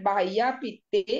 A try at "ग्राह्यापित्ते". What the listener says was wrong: बाह्या नहीं है, ग्राह्या, ग्राह्या है, ग्रह ग्राह्य।